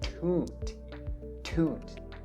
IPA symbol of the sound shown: tut